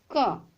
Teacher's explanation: जब हम क का उच्चारण करते हैं तो क के साथ हमें अ की ध्वनि सुनाई देती है, अर्थात क का उच्चारण करने के लिए हमें स्वर की सहायता लेनी पड़ रही है। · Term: व्यंजन वर्ण